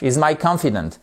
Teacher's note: on a l'accentuation aussi sur la première syllabe, mais le A se prononce comme un A court. Sinon, ils sont identiques au niveau prononciation.